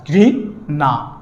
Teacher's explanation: উচ্চারণের ক্ষেত্রে সবসময় কি হবে, দন্তের ন হবে, মূর্ধন্য ন হবে না।